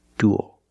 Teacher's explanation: it's one sound ooh plus a dark L